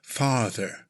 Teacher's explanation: slightly elongate the 'ah' sound